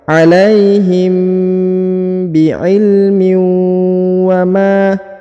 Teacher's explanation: mim bertemu dengan ba, maka ditahan dan ditekan 2 harokat